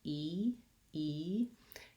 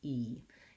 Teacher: native language so just try that sound by itself e e your tongue is high in front and tense e it's the same sound that's in eat and need and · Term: tense e sound